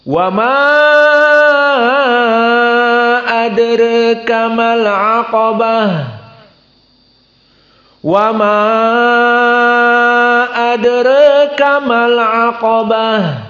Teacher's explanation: jangan lupa qafnya al-aqa mufakhamah dan bah dalam keadaan hams